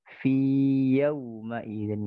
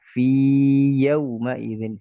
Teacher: tidak dibaca idgham, tidak diidghamkan fi yang pertama ini, melainkan diizharkan